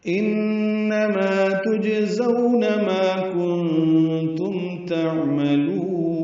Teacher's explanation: انما نون مشدد پہ غنہ ہے، آواز ناک کے بعد سے لے جا کر 2 حرکات تک ٹھہرائیں گے، ما الف مدہ ہے، تجزون جیم ساکن پہ قلقلہ ہے